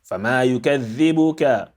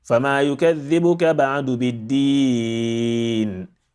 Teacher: emphasize dhal some more, unlike الذين, which is not emphasized